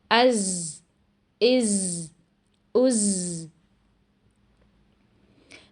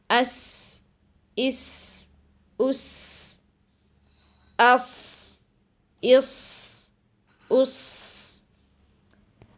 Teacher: مگر جب ہم سین اور صاد ادا کرتے ہیں تو زبان کی نوک کے اس آخری حصے کو پوری قوت کے ساتھ لگانے کی بجائے تھوڑا کمزوری کے ساتھ نیچے والے 2 دانتوں کی اندرونی سطح پر لگاتے ہیں اور ووکل کورڈز کھلے رہتے ہیں، جس کی وجہ سے یہاں سانس جاری رہنے کی آواز آتی ہے اور ساتھ ساتھ سیٹی کی آواز بھی سنائی دیتی ہے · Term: بزنگ ساؤنڈ